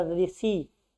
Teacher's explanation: अगर जीभ ऊपर आप ले नहीं जाएंगे मूर्धा में तब तक आप री का उच्चारण नहीं कर पाएंगे। ठीक, तो री जो होता है उसका उच्चारण स्थान क्या होता है, मूर्धा होता है।